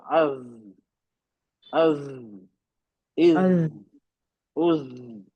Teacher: आसान निकलना, बस ये टेक्निक मालूम होना चाहिए, जबान की नोक कहाँ लग रही है और हमें दांतों को करीब करना है और थोड़ा बजिंग साउंड देना है